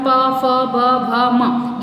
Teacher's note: ये ओष्ठ की सहायता से बोले जाते हैं, इसलिए इन्हें ओष्ठ कहा जाता है